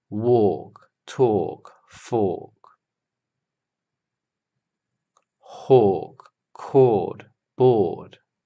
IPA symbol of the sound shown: ɔ: